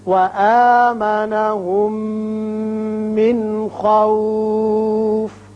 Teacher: وآمنهم میم ساکن ہے، اس کے بعد میم متحرک، یہاں ادغام ہوگا غننے کے ساتھ